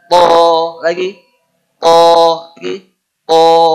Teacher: Berniat mengucapkan o tapi mulutnya malah dibuka.